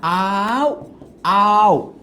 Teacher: আর উ এখানে উটা হচ্ছে অর্ধ স্বরধ্বনি। কেন? কারণ এটাকে টানা যাচ্ছে না।